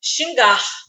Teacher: na palavra xingar Eu tenho a partir de duas sílabas xingar então neste caso a tônica tá no gar xingar então é aquela sílaba que eu falo com mais força eu não posso forçar quando a tônica está na última sílaba